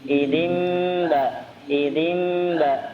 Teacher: Ya, walaupun ada dua cara membaca ya, kita membaca dengan cara itbaq dengan merapatkan kedua bibir dengan sempurna